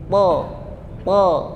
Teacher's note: Yang membedakan itu huruf to bentuk lidahnya. Bentuk lidahnya, pangkalnya terangkat. Ujung lidahnya sama seperti ta dan to.